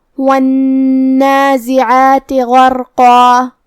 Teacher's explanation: یہاں نون پہ تشدید ہے، تو 2 حرف کے برابر ہمیں حرف النون کو پڑھنا ہے، کیونکہ تشدید کی اصلیت 2 حرف ہوتی ہے.